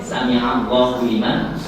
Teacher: ain makhrajnya itu di tengah-tengah tenggorokan